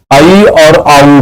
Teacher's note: वैदिक संस्कृत में जैसे ए की जगह आई और ओ की जगह औ का उच्चारण होता था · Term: संयुक्त स्वर